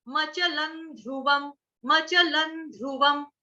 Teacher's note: इसको मचलन नहीं कहेंगे, मचलन, मचलन नहीं, मचल, मचल, मचल। मचल के ऊपर अनुस्वार, उसका उच्चारण जो है वो हलंत न, आधे न से करेंगे।